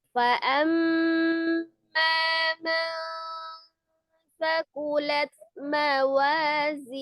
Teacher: karena ada gunnahnya ikhfa itu samar sekitar 2 sampai 3 harokat ditahannya